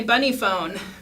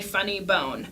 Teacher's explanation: I switched the f sound and the b sound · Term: spoonerism